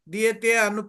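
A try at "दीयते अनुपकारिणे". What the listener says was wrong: Diyate Nupakarine. There is no pronunciation of a. Diyate Nupakarine. Yes.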